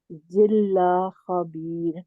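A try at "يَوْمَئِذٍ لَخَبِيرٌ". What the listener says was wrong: زال کو ٹھیک کرے، ذلہ نہیں ہے، زال ہے، زال، زال کا مخرج کیا ہے باجی؟ زال اوپر والے دو دانت،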